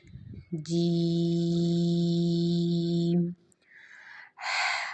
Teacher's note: جیم کے لیے ہم نے زبان کا جو درمیانی حصہ ہے اس کو ہم نے اوپر کے تالو کے ساتھ ملانا ہے اور پھر ہم نے ادا کرنا ہے جیم۔